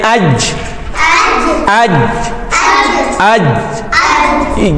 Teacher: زبان کا درمیانی حصہ اوپر والے نرم تالو سے جا لگے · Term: جیم کا مخرج